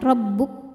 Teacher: Kaf dari segi suara sifatnya syidah kuat tertahan rabbuk dari segi angin keluar anginnya rabbuk Nah untuk Kaf yang